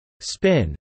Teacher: a third sound that is neither voiced nor aspirated, which occurs in English only as an allophone of p, for example after an s, as in the sound of the p in spin.